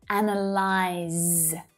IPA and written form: 'ænəlaɪz (ANAYLYSE)